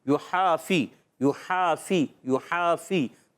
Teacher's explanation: फ़ा अदा होता है हमेशा ऊपर वाले दांतों के किनारे, नीचे वाले होंठ के तर हिस्से से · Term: फ़ा की अदायगी